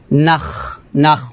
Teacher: وقضبا তারপর ওয়াজাইতুনাউ নাউ গুণ হবে ওয়াজাইতুনাউ ওয়ানাখলা ওয়ানাখ নাখ এখানে খটাকে মোটা করে হামস করতে হবে নাখ নাখ হলকে শেষ থেকে উচ্চারণটা আসবে ওয়াজাইতুনাউ ওয়ানাখলা আবার ওয়াজাইতুনাউ